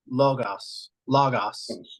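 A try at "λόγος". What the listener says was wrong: Just be consistent. You can't say lo gos with a long and a short O. So it's either logos or logos, either one.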